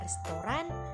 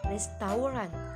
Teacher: restoran yang diambil dari bahasa Prancis restaurant dengan penghapusan fonem T pada akhir kata